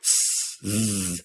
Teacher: If you do that exact same thing, but instead you say s, you'll find that there is no buzzing. S is the unvoiced version of z.